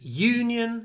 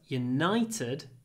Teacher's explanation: Union it's on the first syllable but United it's on the second syllable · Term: stress moves